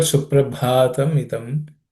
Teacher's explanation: The first word Suprabhatam idam, the bha is aspirated. This is the fourth letter in the pa class of consonants, pa varga.